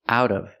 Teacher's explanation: the T changes to a fast D